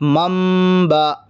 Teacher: مثلاً میم زبر مم۔ اب یہاں پر نون نہیں پڑھیں گے بلکہ نون کی جگہ میم پڑھیں گے، کیونکہ نون ساکن کے بعد با ہے۔ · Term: اقلاب